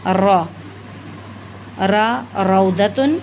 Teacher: ज़ुबान की नोक को तालु के इब्तदाई हिस्से से लगाएंगे तो ल, न, रॉ अदा होते हैं